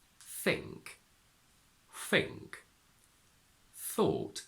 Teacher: TH fronting means that the voiceless sound th sounds like f. So we have think, thought sounds exactly like fought, the past of fight.